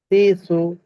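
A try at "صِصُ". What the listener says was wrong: হয়ে গেছে, সতের উচ্চারণটা অস্পষ্ট রয়ে গেল। সইসু, সইসু। সিটি যেটা আছে, সিটি যে আওয়াজটা আছে, এটার পরিপূর্ণ প্রয়োগ করতে হবে। সদ, সিন, জা।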